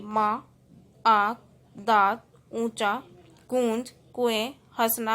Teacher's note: अनुनासिक चंद्र बिंदु जिसे बोलते हैं हम। ऐसे स्वर जिनका उच्चारण नाक और मुंह दोनों से होता है, मतलब जिनको बोलते समय हमारा नाक और मुंह दोनों से उच्चारण होता है, ऐसे स्वर अनुनासिक कहलाते हैं। · इसमें हम मुंह और नाक दोनों का यूज कर रहे हैं उच्चारण करते समय।